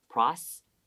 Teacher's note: For the second T, since it's a hard T, your tongue doesn't need to come out, okay? It just touches the back of your teeth.